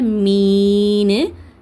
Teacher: சுக்குூன் பெற்ற யாக்கு முன்னாடி கஸ்ரா அதாவது ஜேர் வந்ததுன்னா இதை யா மத்தான்னு சொல்லுவோம் இரண்டு ஹரக்கத்தை நீட்டி ஓதணும். அதனால மீன்னு நீங்க நெடியலா ஓதுங்க.